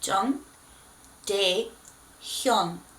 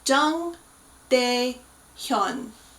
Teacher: Now, his name contains two of those weird characters where it's not an ah and it's not an O, it's an O, pronounced way back in the back of your throat. So Jung and Hyun both have those sounds.